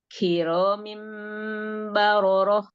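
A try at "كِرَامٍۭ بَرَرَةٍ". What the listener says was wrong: Ulang, Afwan. Kiromim ada matnya. Kiromim bararah.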